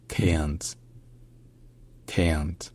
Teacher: la voyelle A, dans cette position-là, est transformée en diphtongue qui rassemble un peu le son E et le son E.